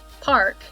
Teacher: At least, well, it has long vowels in some places, and then in non-rhotic dialects like British English and Australian English, instead of pronouncing the R, we lengthen the vowel before it